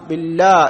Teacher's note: ബില്ലാ എന്ന് തർക്കീഖ് ആക്കി അഥവാ ലോലമാക്കിയാണ് പറയുക